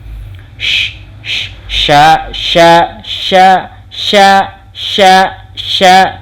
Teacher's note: Shin itu sifat hurufnya ya. Ada angin yang berkumpul gitu ya di rongga mulut.